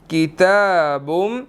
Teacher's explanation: जी, तो यहाँ पर किताबुम, ता के ऊपर खड़ी ज़बर है, 1 सेकंड लंबा करना है। और इसी तरह बा मीम के साथ मिल रहा है, बुम, मीम मुशद्दिद है, यहाँ पर हमने गुन्ना करना है